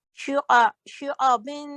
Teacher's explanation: आइन गले से, शुआ आइन गले से निकलना चाहिए.